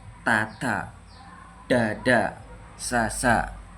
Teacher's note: ujung atau bagian depan lidah menyentuh punggung alveolar, yaitu bagian keras tepat di belakang gigi atas · lidah menyentuh langit-langit bagian depan